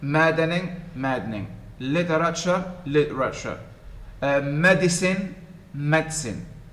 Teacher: you compress the syllables you shorten them to make them two in this case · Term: compression